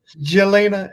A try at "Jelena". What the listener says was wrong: It's actually pronounced Yelena. The J is a Y.